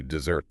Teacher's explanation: notice how the emphasis shifts to the second syllable